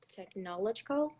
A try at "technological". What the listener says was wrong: Almost there. Technological. The emphasis is in the next syllable. Technological.